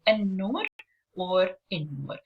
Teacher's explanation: we stress on the first letter and we don't really pronounce the l sound, which is in the beginning of the prefix that we add to the nouns in Arabic to change from indefinite into definite.